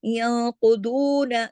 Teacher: तो ये दो हरकत खींचकर यक़ुदून, दू दू को खींचेंगे लेकिन ना को नहीं। कुदून, नून जबर ना, एक हरकत है, एक हरकत ही पढ़ा जाएगा।